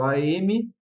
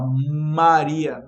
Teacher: não precisa nem juntar os lábios, mostrando que aquele M não é o M que nós estamos acostumados. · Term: dígrafo